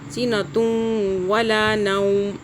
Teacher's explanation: تو یہاں پہ پچھلا تا اور واو کو آپس میں مرج کریں گے، اکٹھا کر کے ملا کے مرج کر لیں گے۔ سینہ توں کریں گے، دو پیش ایک پیش میں بدل جائے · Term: ادغام